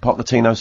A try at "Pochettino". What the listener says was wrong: His nickname's Poch, not Pock. And you're going Pochettino. Yeah, but it's Barcelona, and that's where you get What we started with Pochettino. When did you switch to Pochettino?